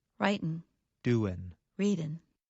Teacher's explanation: In careful speech, Americans pronounce the G at the end of the verb. However, in fast speech, many Americans do not pronounce the G at the end of the verb.